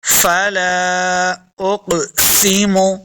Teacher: فلا اقسم، قاف کو موٹا پڑھنا ہے. قاف حروف مستعلیہ سے اور قلقلہ میں سے بھی ہے تو اس کو خوب واضح کریں گے.